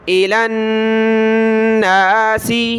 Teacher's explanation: لام کو نون کے ساتھ ملائیں گے، یہاں غنہ ہوگا